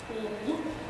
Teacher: Notice how I'm clipping the W sound and I'm not saying wa, I'm saying oo.